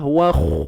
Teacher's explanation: Huruf kha tebal angkat pangkal lidah kita